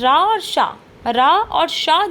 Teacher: र और श जो हैं इनका भी उच्चारण हम मूर्धा से ही करते हैं